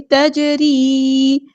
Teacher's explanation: جیم ساکن ہے تو یہاں پہ کلکلا ہو رہا ہے